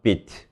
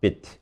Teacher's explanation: 실제로는 네이티브 스피커는 이 비트랑 이 비트를 구분하는 게 길이 차이로 구분하는 게 아니고요. 구강 안에서 혀의 위치가 조금 더 높으면 위에 비트고요. 조금 낮게 들리면 단모음 비트로 알아듣습니다. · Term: tense lex 구분